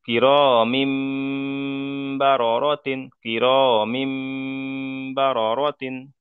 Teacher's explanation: মিমের নিচে দুজের তানবিন এসছে, আর তানবিনের পরে বা এসেছে, তাই তানবিনকে মিমের দ্বারাই পরিবর্তন করে এক আলিফ পরিমাণ গুণনা সহ পড়তে হবে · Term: ইকলাব